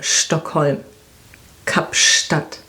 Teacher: So ST combination is pronounced like SHT